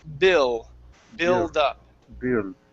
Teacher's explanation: the difference between the Spanish L and the English L is that you move your tongue forward.